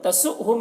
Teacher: تسؤہم یہاں پر حمزہ ساکنہ ہے، اس کو جھٹکا لگا کر پڑھیں گے